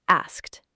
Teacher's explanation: The correct pronunciation is asked. Just one syllable with a kt sound at the end.